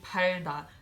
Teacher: it's an L because it's between a vowel and a consonant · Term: L sound